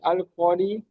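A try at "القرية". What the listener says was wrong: আল করি বলে র টান দিচ্ছেন, র হারাকাত টান হবে না, কটি টান হবে, আলিফ মাদ্দা। আল করিয়াতু।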